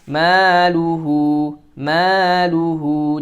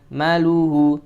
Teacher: Maluhu maluhu, jangan maluhu, ma-nya panjang 2 harokat, mad tabi'i juga